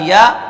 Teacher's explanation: بیچ زبان اور بیچ کا ہی تالو، اوپر کا جو بیچ کا تالو ہے درمیان میں بالکل اس کے، وہاں سے آپ کی یا ادا ہوگی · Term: یا کا مخرج